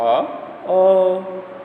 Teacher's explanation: विवृत स्वर के उच्चारण में मुख द्वार पूरा खुला होता है।